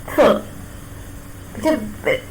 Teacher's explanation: There is no firm contact between the tip of the tongue and the upper row of teeth.